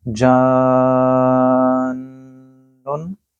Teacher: یہاں کیونکہ نون کے اوپر نون مشدد ہے، آپ نے یہاں غنہ بھی کرنا ہے، تو اس کو بولا جائے گا جانن، 3 سے 4 سیکنڈ کے لیے اس کو لمبا کریں گے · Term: مد لازم